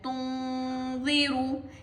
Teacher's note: After nun sakina is dal, and dal is a ikhfa letter, so we are going to hide the voice of nun in our nose